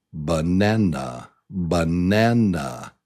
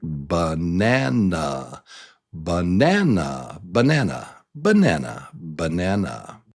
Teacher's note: the middle syllable, syllable number 2, is the top, is the stressed syllable